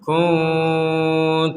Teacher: Am kuntum syuhada. Di sini ada nun sukun bertemu kaf, maka kita membacanya dengan samar.